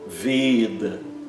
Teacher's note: esse e é sempre fechado e longo · ela nunca é pronunciada como nosso e aberto, sempre como e fechado, como se tivesse um acento circunflexo, tá?